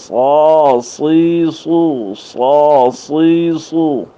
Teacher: یاد رکھیں طا، وا، صاد، ضاد، ان میں ہونٹ ہلانے سے بہت ہی احتیاط رکھیں. ہونٹ بالکل نہ ہلائیں. سوا اس طرح نہیں، اندر سے آواز کو موٹا کر کے اس کو پڑھیں گے